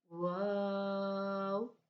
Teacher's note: دونوں ہونٹ گول کرنے سے ہمارا واو ادا ہوگا